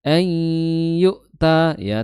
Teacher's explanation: Idgham bighunah tapi naqis idghamnya bukan kamil tidak sempurna gunahnya.